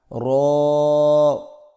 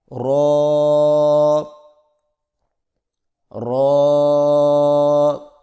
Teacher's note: زبان کی نوک کی پشت کو اوپر والے دانتوں کے مسوڑوں سے لگا کر موٹی آواز میں پڑھیں